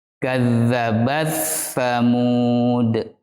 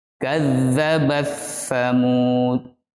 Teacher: Cara membacanya meleburkan huruf ta dengan huruf sa. Sehingga yang terdengar hanya bunyi huruf sa.